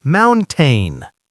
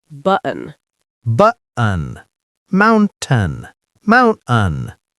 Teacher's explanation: choke the T in your throat. Say bu-un. Button. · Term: glottal stop